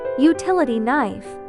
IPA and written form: juːˈtɪləti naɪf (Utility Knife)